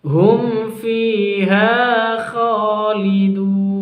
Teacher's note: Hum fiha khalidun. Hum fi mim sukun berjumpa dengan fa jelas izhar safawi. Fi mad tabi'i, ha mad tabi'i, kha mad tabi'i, lidun ini bacaan mad arid lis sukun, panjangnya 2, 4 sampai 6 ketuk.